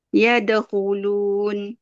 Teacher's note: huruf dal tu bawa ke belakang gigi